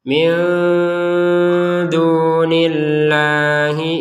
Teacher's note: Nun sukun bertemu dal dibaca dengan samar. Yang ini dengung, yang ini samar.